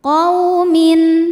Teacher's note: Syana'anu qaw. Qaw ada harfulin sebab ada waw sukun didahului baris fathah, maka dibacanya lembut.